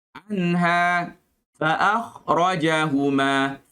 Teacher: kha makhrajnya adalah kawasan halkum. kawasan kerongkong. Maka kena buka mulut untuk dapatkan makhrajnya.